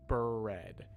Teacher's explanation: However, it still is the same or a very similar sound because you can hear the little vowel sound right after the B and before the R.